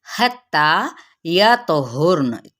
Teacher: तो पे कलकला, हुर्न जब मैंने वक्फ कर दिया तो वक्फ बिल इस्कान